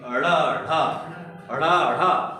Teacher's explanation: इसको उच्चारण करते समय जीभ उठकर मूर्धा को टक्कर लगाती है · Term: उच्छिप्त व्यंजन